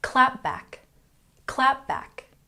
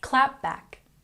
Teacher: we put the stress on the first syllable.